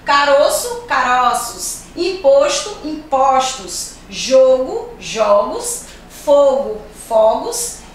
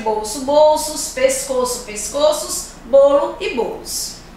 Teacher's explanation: quando vai fazer o plural, apresenta um som mais aberto